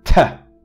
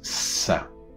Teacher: And what happens here is you touch it, but you don't press it hard, because if you press it hard, then you can only release it once and you can say ta. But if you alleviate the pressure and let air pass through continuously in the form of a friction, create some friction or frication, you will produce the fricative, which you can continuously pronounce.